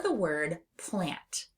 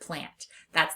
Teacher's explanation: We hear that nasalized A sound in lots of words, including the word lamp or the word plant.